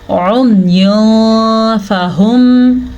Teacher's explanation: यहाँ पे इख्फा का कायदा हो रहा है, क्योंकि नून तनवीन के बाद फ़ा हरूफ इख्फा में से आया हुआ है। तो हम नून तनवीन की आवाज़ को छुपा के और गुन्ने के साथ पढ़ेंगे, यानी कि उम्युन फ़हुम, ठीक है।